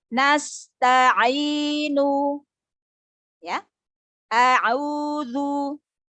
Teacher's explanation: Lurus, suaranya lurus dari rongga mulut ke luar. Jadi tidak mengalir ke al-khoisyum, tidak masuk ke hidung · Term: al-jauf